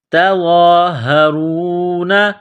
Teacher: را کو موٹا کرنا ہے، را کے اوپر پیش ہے، را کو واو کے ساتھ ملانا ہے۔